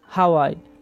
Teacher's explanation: আ, ও, আ এবং রস্বই পরপর চারটি স্বরধ্বনি উচ্চারিত হয়েছে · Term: চতুস্বর